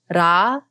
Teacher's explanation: we like to roll the r almost so we feel the tip of the tongue strike the roof of the mouth